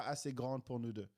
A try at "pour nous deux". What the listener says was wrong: Assez grande pour nous deux. Pour nous deux.